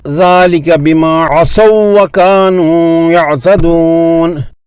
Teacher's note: واو لین کی آواز کو اونچا یعنی بلند کرنا نبر ہے، اور یہ نبر صرف وصلاً ہوگا یعنی روانی سے تلاوت کرتے ہوئے، جیسے ذَلِكَ بِمَا عَصَوْا وَكَانُوا يَعْتَدُونَ۔